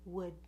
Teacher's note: when we say would, we go up for the D at the end, would. And the N, if you notice, is in the same place.